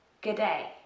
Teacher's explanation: If you use it, make sure you stress the second syllable, day.